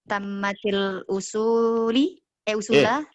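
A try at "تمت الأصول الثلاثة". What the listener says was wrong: Salah. Tinggal satu usulu. Tammatil usulu as-salasatu ya.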